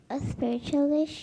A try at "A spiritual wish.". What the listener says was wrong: don't put a question mark on the end because you're answering me, right? So, don't say a a spiritual wish like a question.